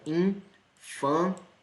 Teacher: A sílaba tônica é a segunda, tá? Contando do começo para o fim.